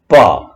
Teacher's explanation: जब प, देखिए होठ और केवल होठ और पीछे से हवा का प्रेशर, प, दोनों होठों को मिला करके उसको खोला जाता है। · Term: होष्टव्य